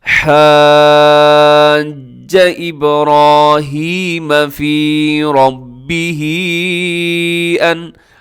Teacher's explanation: اب ربہ را موٹا ہے